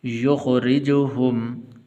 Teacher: اللہ ولی الذین آمنوا یخرجهم، را کے نیچے زیر ہے تو اس لیے اس کو باریک کر کے پڑھنا ہے، اس کو موٹا نہیں کرنا